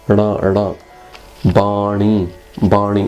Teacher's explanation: This is called a retroflex. You see, flick the tongue while you're saying it.